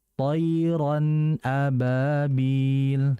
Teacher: Itu ra itu kan harokatnya fathatain ya. Fathatain ketemu hamzah itu namanya adalah izhar. Ya, izhar halqi. Artinya tanwinnya dibaca jelas.